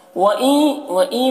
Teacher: وَإِن میں ادغام ناقص ہو رہا ہے، غنہ کے ساتھ میں پڑھیں گے۔